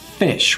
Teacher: F sound it's voiceless if I touch my throat no vibration